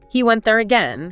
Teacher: in casual speech, you might just hear the statement with a rising tone